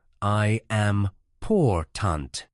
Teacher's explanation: in the word important, the stress falls on the second syllable